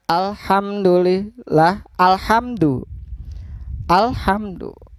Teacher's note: untuk membaca Alif Lam Qomariah atau Al qamariyah adalah dengan membaca al-nya secara jelas tanpa meleburkan bacanya ini sesuai dengan namanya alqamariah hanya dibaca jelas bukan ako Maria